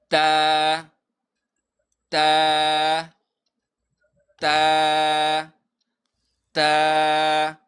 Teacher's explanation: یو الف په مقدار به یې راکاږو او تا ادا کېږي د ژبې د سر او بره مخامخ دوو غاښونو د ویښونو نه